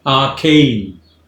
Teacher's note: It's arcane, 2 syllables, arcane, stress is on the second syllable